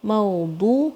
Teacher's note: وَأَكْوَابٌ مَو یہاں پہ پھر لین ساؤنڈ ہے، میم اور واو لین ساؤنڈ. موضوع، ضاد کی ساؤنڈ کہاں سے آتی ہے؟ آپ کی زبان کے پیچھے کی طرف سے، پیچھے سے زبان جو ہے آپ کی داڑھوں کو ٹچ ہوگی اور بھاری ساؤنڈ ہے یہ.